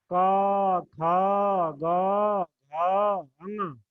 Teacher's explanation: गले से आवाज आ रही है, गले से। ध्यान दीजिएगा, गले से आवाज आ रही होगी। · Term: कंठ